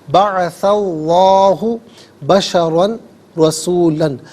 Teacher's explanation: بعث اللہ، بعث میں سا پر زبر ہے، اسے اس میں اللہ کی حرف لام کے ساتھ ملائیں گے، درمیان میں سے الف حمزہ کو حذف کریں گے۔ اس میں اللہ کی حرف لام سے پہلے والے حرف سا پر زبر ہے، تو اس میں اللہ کی حرف لام کو پر کر کے پڑھا جائے گا